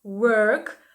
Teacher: перша літера у нас читається як wow витягуємо губи трубочкою